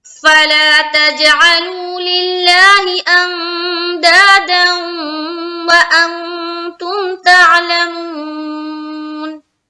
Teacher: اس کے بعد میں اخفا کیا، دا میں الف مدہ کیا، پھر دال کو واو سے جب ملا رہے تو یہاں پر ہو رہا ہے ادغام ناقص. دو زبر کی تنوین کے بعد واو آ گئی یومین کی 4 حرف میں سے، تو یہاں پر ہو گئے ادغام ناقص. غنہ کے ساتھ ہم ادغام کریں گے.